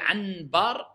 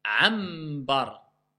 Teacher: je prononce mime au lieu de nun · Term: le qalb